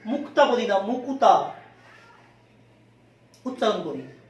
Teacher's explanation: এই যুক্ত ব্যঞ্জনের মধ্যে একটা স্বরধ্বনির আগমন ঘটাই। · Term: স্বরভক্তি